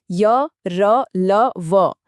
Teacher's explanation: इनकी आवाज ना तो पूरी तरह स्वर जैसी है ना ही व्यंजन जैसी। जब इन्हें बोलते हैं तो जीभ मुंह में कहीं भी पूरी तरह टच नहीं होती। इसीलिए तो इन्हें सेमी वोवेल यानी आधा स्वर भी कहा जाता है। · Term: अंतस्थ व्यंजन